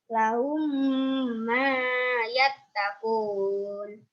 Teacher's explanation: Alasannya karena mim sukun bertemu dengan mim. Terus cara membacanya dengan 3 harokat. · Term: idgham misli